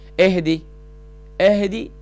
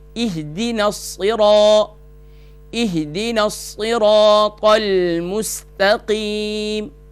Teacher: اہدی، اہدی، اہدی نہیں کرنا اس کو، حمزہ جب اس کے نیچے زیر ہوگی تو یہ تقاضا کرتا ہے کہ اس کو لائٹ کیا جائے، اس کو گرا کر پڑھا جائے۔ جب بھی زیر یہ تقاضا کرتی ہے کہ مجھے گرا کر پڑھا جائے تو یہاں اہدی نہیں کرنا ہے، یہاں اہدی۔ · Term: عربی کا لہجہ